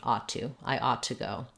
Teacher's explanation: I would link it together and just make one t sound